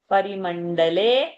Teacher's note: only le is a long sound. All others are short sound over there.